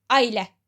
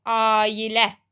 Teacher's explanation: Məsələn, mən əgər bu sözü qoşa nöqtəsiz qeyd eləsəm, o deməkdir ki, mən bunu deyirəm ki, a ilə. Mən axı a ilə demirəm. A-nı biraz uzadıram. Ailə. Ona görə də qoşa nöqtəsini də qoymalıyam, istifadə eləməliyəm.